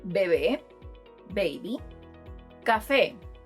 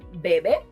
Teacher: both words end with a vowel and the stressed syllable is the last one. Changing the stress would result in Bebe, which has a different meaning and is related to the verb beber, to drink.